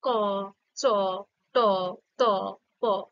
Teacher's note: যেটা অঘোষ ধ্বনি, সেটা ধ্বনি উচ্চারণের সময় স্বরতন্ত্রীটা কম কাঁপে। হ্যাঁ, তো সেটা হয় অঘোষ ধ্বনি।